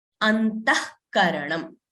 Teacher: The visarga is not pronounced fully. It is only pronounced half. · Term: jihva muliyah